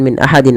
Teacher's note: tanwinnya dan kita hukumi dengan bacaan izhar yang artinya jelas ya ketika membaca Min tidak boleh ditahan